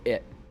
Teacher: they utilize the glottal stop, which is basically just where you cut off your voice for a T sound rather than making the actual T sound